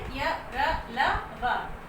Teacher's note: इनका उच्चारण करते समय हमारी जीभ मुख के किसी भी भाग का स्पर्श नहीं करती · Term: अंतःस्थ व्यंजन